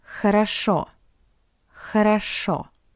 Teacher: Because the first two O are unstressed, that's why we pronounce it as A.